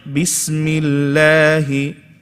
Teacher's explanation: The word Allah, why is it light here? Because there's a kasra before the word Allah.